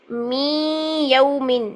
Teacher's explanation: من یا کیا ہے کہ یہاں پر ادغام مال غنہ ہے تو غنہ 2 سیکنڈ کے لیے ہم غنہ کریں گے